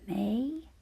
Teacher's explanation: this one is our open syllable the vowel is right at the end and it's a long vowel sound